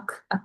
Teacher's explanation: 크 발음할 때 아크 아크 해 보시면은 저 뿌리가 천장에 닿거든요